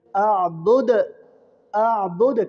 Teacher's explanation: حروف قلقلہ میں سے، اور دال ساکن جب ہوگی تو دال میں قلقلہ ہوگا